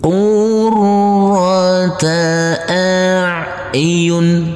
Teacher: Huruf ro kita tekan, kita tahan, kita baca dengan tebal untuk setiap huruf-huruf yang bertasydid ini.